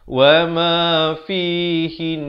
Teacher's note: Dia kalau nun sabdu, walaupun kita waqaf, dia tetap dua harakat.